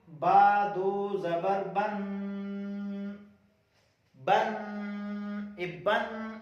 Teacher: جو گنگناتی ہوئی آواز نکلتی ہے نون ساکن کی